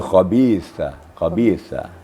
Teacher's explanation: sedikit ada sekedar Hamas sedikit hembusan